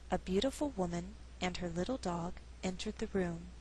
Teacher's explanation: Again, grammar is our guide, and we're dealing with a compound subject, meaning there's two. So it's possible to pause after woman and before dog and still sound natural